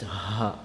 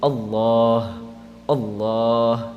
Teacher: that ha sound, that comes from the chest, the lower portion of the throat.